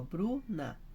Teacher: Pensa comigo, ó, Bruna, senão ficava Bruna, então Bru que é forte, então é paroxítona